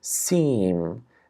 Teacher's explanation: So seem, see, like there's some nasalization in it. Some air is going out of the nose when I say seem. So I kind of lower the velum as along with saying the E vowel, preparing myself to say the sound.